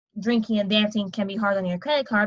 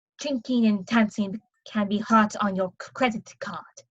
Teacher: the D's usually become T's, especially the end and start of words. So drinking and dancing can be hard on your credit card becomes drinking and dancing can be hot on your credit card, with the D in the middle of credit staying the same.